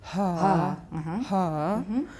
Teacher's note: Put more voicing in, so it ha, sounds like you're in a 气喘的感觉. ha, ha, you'll probably find that the breathiness extends into the vowel